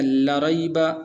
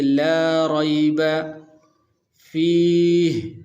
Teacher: لام اور اس کے ساتھ الف بھی موجود ہے. تو اس کو تھوڑا سا لمبا کریں گے